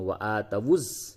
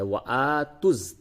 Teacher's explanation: اس جگہ پہ بعض لوگ غلطی کر دیتے ہیں وَآتَوُا الزَّكَاةَ پڑھتے ہیں وَآتَوُز، یہ غلط ہے. وَآتُز تا کو ڈائریکٹ آپ کو زا سے ملانا ہے